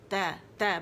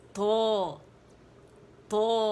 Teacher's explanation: تو تا باریک ہے، اسے باریکی سے ادا کریں گے. تو اس کا اپوزٹ ہے، موٹا ہے تو اسے موٹائی سے ادا کریں گے. اس میں زبان نیچے رہتی ہے اور اس میں پیالہ بنتی ہے